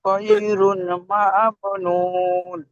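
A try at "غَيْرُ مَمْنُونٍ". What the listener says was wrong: গয়রুন নয়, গয়রু। গয়রু মামনুন। শেষেগুলো আয়াতগুলো একটু টান বেশি দিবেন, শুনতে ভালো লাগবে। শেষে আয়াতগুলো একটু টান বেশি দিবেন, চার আলিফ টান দিবেন, শুনতে ভালো লাগবে। গয়রু মামনুন।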